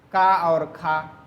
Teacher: स्पर्श या वर्गीय व्यंजन में प्रत्येक वर्ग का पहला दूसरा ये क्या है, अघोष, क्योंकि इनके उच्चारण में गूंज, कंपन, झंकार नहीं होती है